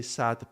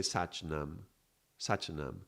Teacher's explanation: I've read somewhere, I don't know, I'm not an expert in Gurumukhi, so I cannot know for 100%, but I read that in some areas of the Punjab, maybe some farmlands, some area, they will not say Sat, but Sach